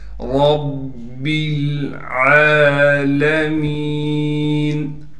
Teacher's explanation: را کو موٹا کر کے پڑھیں گے اس لیے کہ را پر زبر ہے، پھر را کو ہم با سے ملا دیں گے، با پر تشدید ہونے کی وجہ سے تھوڑا ٹھہراؤ کریں گے، با کو آگے لام سے ملائیں گے، عین پر کڑا زبر ہونے کی وجہ سے عین کو ایک الف کی مقدار کھینچیں گے۔